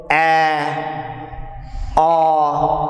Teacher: the tongue is positioned at the floor of the mouth, and tongue is, we can say, far away from the roof of the mouth, and jaw is open. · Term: open vowels